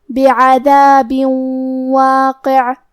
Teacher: کلمت واقع حرف القاف کی ادائیگی زبان کے جڑ اور تالو کے نرم حصے سے ہے · تو ہم یہ تنوین کو واو میں ملا کے غنہ اور تشدید کے ساتھ یہ حکم کو ادا کریں گے. بعذاب واقع. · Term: ادغام